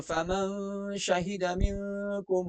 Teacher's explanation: فمن شہد نون ساکن کے بعد یہاں پر شین ہے تو اخفا مع الغنہ